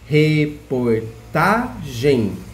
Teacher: Para falar o tá do reportagem, nós levantamos um pouco o tom da voz. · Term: sílaba mais forte